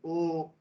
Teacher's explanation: আমার গলাটাও লাগছে, তার সঙ্গে আমার ঠোঁটটাও গোল হচ্ছে, রাউন্ড হচ্ছে ও, তাহলে আমার এখানে কণ্ঠও লাগছে, ওষ্ঠও লাগছে। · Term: কণ্ঠোষ্ঠম